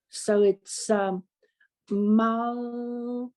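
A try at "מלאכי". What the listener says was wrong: No, I didn't hear a syllable.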